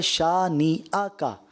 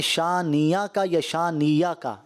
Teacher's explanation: حمزہ تسہیل کر جاتے ہیں، نرم کر جاتے ہیں، یا پھر اس کو یا سے بدل جاتے ہیں